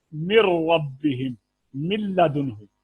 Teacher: لام اور را میں تام یعنی بغیر غنہ کے ہوگا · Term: ادغام تام